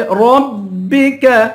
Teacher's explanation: را کو پر پڑھیں گے، کاف کو باریک کریں گے